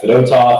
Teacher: You got to have the accent on the 2nd syllable, not the 1st syllable